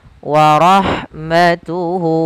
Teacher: Kemudian pada lafal warahmatuhu, lafal ha ketika dia sukun, maka huruf ha-nya itu dialirkan nafasnya.